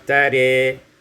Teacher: dibaca imalah fathah ra dan alif sehingga kita baca tare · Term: imalatu fathatir ra